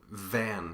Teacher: you stay on the V your hand should feel you're buzzing in your throat F and V are a pair of consonants that are identical